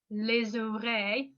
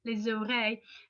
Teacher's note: did you hear how it's linking again? It's like saying just one word, les oreilles, with the Z sound